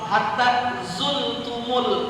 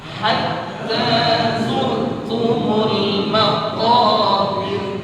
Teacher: Yang kedua, ra pada ayat kedua dibaca tarqiq, dibaca tipis.